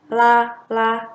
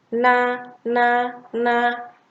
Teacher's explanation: Jika kita baca huruf lam itu akan menyentuh langit-langit tapi dari tepi-tepi nya saja nah jika Nun itu menyentuh langit-langit dari ujung lidah